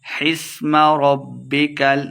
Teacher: با مشدد ہے، را کو با کے ساتھ ملا کے پڑھیں گے، لمبا بالکل نہیں کرنا